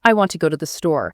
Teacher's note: See how want, go, and store get the emphasis.